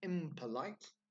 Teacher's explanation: we have that bilabial P sound made with our lips